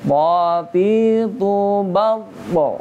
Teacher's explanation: Po itu adalah huruf qalqalah. Jadi wajib mantul. Nah, ketika pantulannya ini apalagi ketika dia pantulan kubro ya, qalqalah kubro.